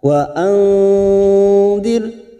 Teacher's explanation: Ada nun sukun bertemu dal, ikhfa hakiki. Kita samarkan bunyi nun sukun 3 harokat.